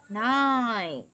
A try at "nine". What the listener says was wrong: Không, mình đang nhầm âm L với âm N rồi. Số 9 mình đọc là N, N thấp cơ.